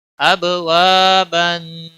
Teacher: हमज़ा बा ज़बर अब, वाव अलिफ ज़बर वा, बा अलिफ दो ज़बर बन, अब वाबन। अब बा पे कलकला होगा, अलिफ खाली है, उसके पीछे ज़बर है, एक अलिफ के बराबर खींचना होगा